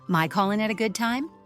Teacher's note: drops the final G sound